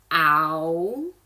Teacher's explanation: So the vowel, ow, and then we're gonna slide that tongue up and back